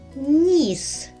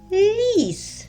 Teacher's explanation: замінили звук н на звук ль і отримали зовсім інше слово